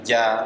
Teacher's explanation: dari J ujung lidah kalau Arab kan bukan dari ujung lidah huruf Jim itu di tengah lidah